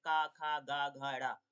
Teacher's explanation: कोमल तालु व्यंजन बोला जाता है